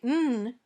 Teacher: your tongue touches the top of your mouth just behind your top teeth and the air comes out of your nose this sound is voiced